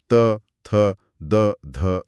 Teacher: इसके बाद हवा और आगे आती है। जीभ जब आगे बढ़कर दांतों के पिछले हिस्से को छूती है तो दंत ध्वनियां बनती हैं।